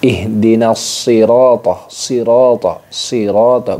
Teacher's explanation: shad itu memiliki desis mirip dengan desis angsa, ya. Shad itu dengan desis angsa. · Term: shofir